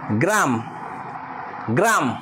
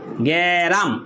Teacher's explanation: স্বরের আগমনটা আ ধ্বনির আগমনটা এটা মাঝখানে হয়েছে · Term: মধ্য স্বরাগম